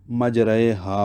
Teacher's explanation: را ممالہ باریک ہی پڑھی جاتی ہے